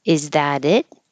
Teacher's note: the t turns into a d is that it you don't hear the T in that at